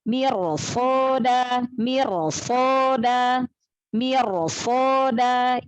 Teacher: ini rok sukunnya dibaca tafkhim ya, dibaca tebal.